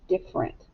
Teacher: we just say different and we kind of glide right on past that er